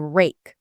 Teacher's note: the R is that pulled back tongue position with no touching